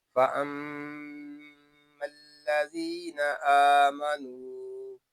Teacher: یہاں میم شدد میں غنہ ہوگا کیونکہ میم شدد میں ہمیشہ غنہ ہوتا ہے، میم کو ہم لام کے ساتھ ملا دیں گے، یہ الف